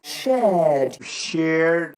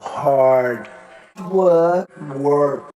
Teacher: In the words shared, hard, and work, most Brits will not pronounce the R sound, but most Americans will.